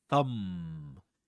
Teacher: You'll notice that there's no vibration in the vocal folds when you produce um the initial sound in thumb.